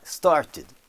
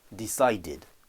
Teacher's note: un D derrière un T va donner tid, avec le petit i qui va venir s'intercaler naturellement